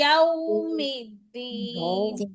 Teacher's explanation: आगे वाव है, वावलीन हो रहा है, नरमी से पढ़ेंगे। और इसके अंदर वाव के लिए पूरे होंठ गोल होंगे। आपके आधे होंठ गोल हुए थे।